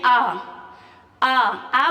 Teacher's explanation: आ में आपका मुंह सबसे ज्यादा खुलता है। आप बोल के देख सकते हैं आ, आ बोलेंगे तो पूरा का पूरा आपका मुंह खुल जाता है। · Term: विवृत